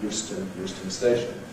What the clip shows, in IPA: ˈjuːstən